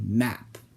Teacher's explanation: The first group involves making total contact between two ends, like the first group of sounds that we went over, except they're made through voice instead of air. Because you're stopping the airflow by making contact with two ends, the sound will actually come out of your nose instead of your mouth. That's why they're called nasals.